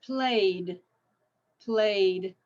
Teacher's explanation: play a voiced so it's played played with a d